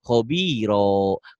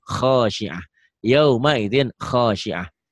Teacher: Karena ini tak marbutoh. Taknya ini kalau dihentikan bunyinya jadi ha.